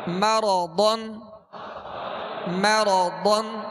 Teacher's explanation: ضاد میں ہونٹوں کو گول نہیں کریں گے ضاد کو پر پڑھیں گے را پر زبر ہے را کو بھی پر پڑھیں گے اور